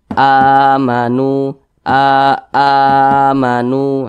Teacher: a ini dibaca panjang ini namanya mad badal bukan Mad Thobi'i Jadi kalau ada huruf hamzah yang dibaca panjang itu adalah mad badal nah panjangnya sama dengan mad thi'i dua harakat atau kira-kira dua ketukan